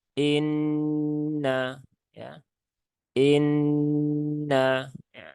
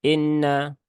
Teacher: cara membacanya adalah diengungkan ditahan tiga harakat dimasukkan ke dalam rongga hidung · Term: ghunah musyadadah